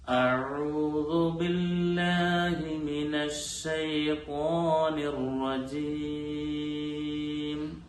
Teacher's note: അശ്ശൈത്വാൻ എന്നുള്ളത് ചുണ്ട് കൂടി ത്വ എന്ന് പറയേണ്ടതില്ല. എന്നാൽ നാവിന്റെ മധ്യഭാഗം മേലെ അണ്ണാക്കിനോട് ചേർന്ന് പ്രത്യേകം ശ്രദ്ധിച്ചുകൊണ്ടാണ് ത്വഇനെ ഉച്ചരിക്കേണ്ടത്.